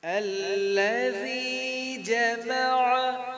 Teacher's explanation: اس میں ذال نرم ہے, ذال کو لمبا بھی کریں گے کیونکہ اس کے بعد زیر کے بعد یا ساکن آ رہی ہے, حرف مدہ ہو گیا. جمع کی عین کو حلق کے درمیان سے ادا کرنا ہے